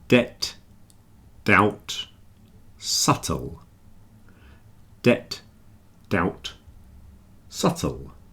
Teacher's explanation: they all have something in common they all have the silent B